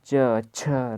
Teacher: स्पर्श संघर्षी व्यंजनों के उच्चारण में हवा उच्चारण स्थान को कुछ रगड़ती चलती